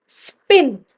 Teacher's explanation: जब आप स्पिन बोल रहे हो it's अन aspirated and these are टू एलोफोंस of the same phoneme प के ही दो एलोफोंस हैं।